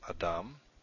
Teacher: Adam, it's the last syllable, dam, that is accented.